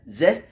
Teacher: you have to position the tip of the tongue very close very close behind the upper teeth